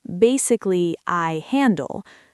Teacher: Notice how the I flows directly into the soft H sound of handle.